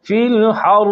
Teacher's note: अब चूँकि रा के नीचे कसरा पढ़ेंगे तो बारीक हो जाएगी, और रा पर वक़फ़ करेंगे तो कसरा ख़त्म हो जाएगी, रा मा क़बल के मुताज हो जाएगी, तो रा से पहले फ़तह आ जाएगी, फिर रा मोटी हो जाएगी · इसी तरह गैर मुज़्ज़िन लिखा हुआ तो ये है, और अगर रा मुशद्दद पर वक़फ़ करेंगे तो रा जहाँ से अदा होता है वहाँ उसके मखरज में निकलने की जगह में ज़बान को थोड़ी देर दबा के रखें। एक राशा यानी लर्ज़ा थोड़ी देर 1 सेकंड जारी रहे ताकि रा पर तशदीद ज़ाहिर हो जाए।